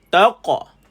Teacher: mati qaf ada qalqalah, lantunan. Lantunkan bunyi qaf.